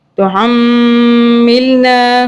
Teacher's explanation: ہا کو حلق سے پڑھنا ہے. ہا سمپل والا جو ہے وہ نہیں پڑھنا · میم پہ تشدید آ رہی ہے تو یہاں پہ ہم پھر میم کو ناک میں 2 سیکنڈ کے لیے رکھیں گے